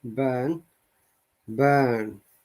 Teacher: burn so remember b-a-r-n is short but tiny stress burn burn in both places in both sounds there is no r sound so we don't need to pronounce the r sound at all